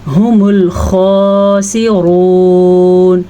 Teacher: خا کو بھی پر پڑھنا ہے اور را کو بھی پر پڑھنا ہے۔ خا کو اس لیے پر پڑھنا ہے کیونکہ خا حروف مستعلیہ میں سے ہے۔